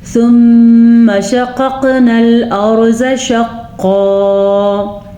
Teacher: زواد کو ہم پر پڑھیں گے اور را کو بھی پر پڑھیں گے. البتہ یہاں پہ دونوں قاف پر بھی پڑھے جائیں گے اور قاف پہ ساکن ہونے کی وجہ سے یہاں پہ قلقلہ بھی ہوگا, یعنی کہ جھٹکے کی سی کیفیت ہوگی.